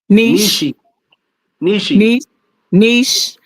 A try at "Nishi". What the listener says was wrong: She got a she on the end though. Nishi. No, it's Nishi.